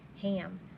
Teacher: because it's followed by an m so it's more nasal sounding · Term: honking a